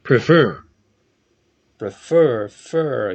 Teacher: o verbo prefer tem duas sílabas também, só que a sílaba final dele é tônica, uma sílaba forte.